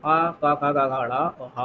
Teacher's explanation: ये कंठ की ध्वनि उत्पन्न करते हैं